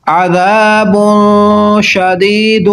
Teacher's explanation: نون تنوین کے بعد شین حروف اخفا ہے، غنہ کر کے پڑھیں گے